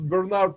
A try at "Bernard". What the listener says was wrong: Bernard, not Bernhard. Bernard.